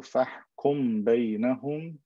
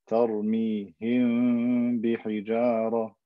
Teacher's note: I put my lips together and I drive air through my nose to create this ikhfa shafawi.